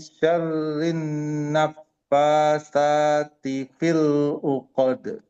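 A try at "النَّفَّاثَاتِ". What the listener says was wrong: Kurang ngalir fa-nya naf. Nah, udaranya terembus wa min pertahankan gunanya di nun. Syarrin ditahan dulu. Syarrin naffatsati fil 'uqad.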